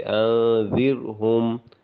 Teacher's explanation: ذال کے نیچے زیر تھی، را سے پہلے جو آ رہا تھا، تو اس وجہ سے ہم نے اس کو باریک پڑھا۔